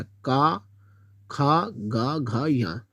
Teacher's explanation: जिन व्यंजन ध्वनियों के उच्चारण में जीवा के पिछले भाग से कोमल तालु का स्पर्श होता है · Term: कंठ व्यंजन